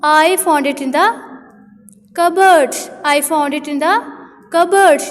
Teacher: ये मतलब कि मैं cupboard को जो है वो राइज कर रही हूँ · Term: intonation